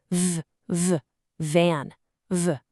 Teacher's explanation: gently rest your upper teeth on your lower lip. We have a voiceless and a voiced pair right here.